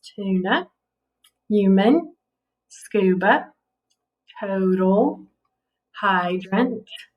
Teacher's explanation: all the schwa was in the second syllable on those